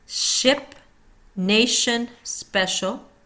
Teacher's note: Sh, unvoiced. Tongue rolling, so back of tongue is between ridge and palate. Continuous flow with friction sound.